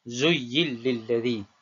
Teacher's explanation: memasukkan huruf nun ke dalam huruf lam. Memasukkan huruf nun tersebut, nun ni, ke dalam huruf lam. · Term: idgham